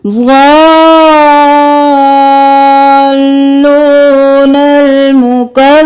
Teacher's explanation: زود موٹا اور پھر زود کو 5 الف کے برابر کھینچیں گے لام کے ساتھ ملاتے ہوئے